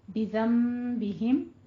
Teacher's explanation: لیکن نون ساکن کے بعد جب با آ جائے تو وہاں پہ اقلاب کرنا ہے، یعنی نون کی آواز کو میم میں بدل دیں گے۔ ربہم بذنبہم دونوں کے اوپر آپ نے 2 ہی کاؤنٹ کرنے ہیں، غنہ آپ نے اتنا ہی رکھنا ہے، لیکن قاعدوں کے نام چینج ہیں۔